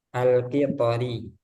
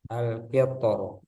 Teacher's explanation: Ada catatan huruf ro pada kata alqitor. Di surah Saba dibaca tarkik ketika wasal dan tafkhim ketika waqaf. Jadi kalau dibaca alqitori itu tipis alqitori. · Jadi kalau dibaca alqitori itu tipis alqitori. Tapi ketika waqaf alqitor tebal